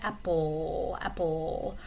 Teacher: But if you were to pronounce a word like apple, that also has an L at the end, but you don't use the tip of your tongue at the alveolar ridge anymore. It's almost like a velar sound. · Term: dark L